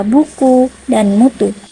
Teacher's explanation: dengan ciri tinggi belakang dan bulat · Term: u terbuka